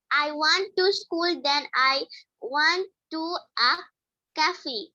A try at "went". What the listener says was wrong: আচ্ছা, খেয়াল করো, এটা কিন্তু want না, কি লেখা আছে? W-E-N-T, went, went।